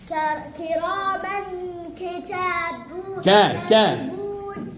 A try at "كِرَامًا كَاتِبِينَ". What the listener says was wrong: كتاب. عندك ألف هو. هذا ألف صغير ينطق مد. كاتبين.